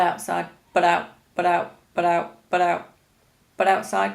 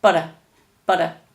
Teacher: can you hear how all these butts are linked to the next word because the next word begins with a vowel there's no space it sounds like one word